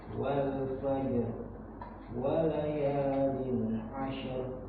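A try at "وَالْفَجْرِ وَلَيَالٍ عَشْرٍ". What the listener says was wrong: Huruf shin itu bukan huruf qalqalah. Jadi dia begini aja. Walayalin walayalin jadi makhrajnya aja. Nempel asyar. Asyar. Jadi bukan asyar. Asyar. Bukan. Tapi asyar. Gitu kan. Karena apa? Karena huruf shin itu bukan huruf qalqalah. Beda dengan wal fajr. Nah, itu huruf jim itu qalqalah. Ya kan, huruf jim itu kan sifatnya qalqalah.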